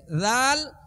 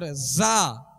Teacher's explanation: تو ذال کو نرمی سے پڑھیں گے، اور اگر نرمی سے نہیں پڑھیں گے تو یہ زا بن جائے گی۔ اب ذال کو نرمی سے پڑھیں گے اور زا کو سختی سے پڑھیں گے